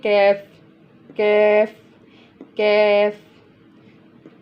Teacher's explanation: ये नरम हिस्से से टच कर रही है ज़ुबान और यहाँ पे सख्त हिस्से से कर रही है, जो मुंह की तरफ आ रहा है हिस्सा। जब सख्त तालु के साथ ज़ुबान की जड़ टच करेगी तब ये वाला कैफ अदा होगा।